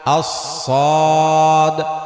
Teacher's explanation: আস-সদ নরম শ্বাস চালু থাকবে।